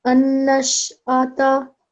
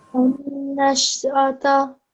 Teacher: This is a noon ghunna. You have to make a nasal sound for 2 seconds.